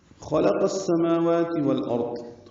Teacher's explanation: خا اور قاف پر ہیں بیچ میں لام باریک ہے. قاف کو السماوات کی سین سے ملانا ہے ادغام شمسیہ.